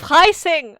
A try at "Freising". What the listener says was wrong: It sounded like you were like maybe with an H. You're like Freising or